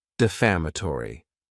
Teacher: this word has 5 syllables, and the stress is on that second syllable.